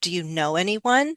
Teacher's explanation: Know is going to be the most important word, a very important content word that we would stress.